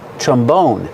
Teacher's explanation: Put the stress on the second syllable.